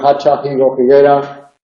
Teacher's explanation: en las zonas donde se aspira la H se confunde con la J, toda la zona occidental meridional, Extremadura, Cáceres, Badajoz, Huelva.